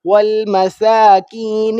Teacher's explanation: سین کو کھینچیں گے ایک سیکنڈ کے لیے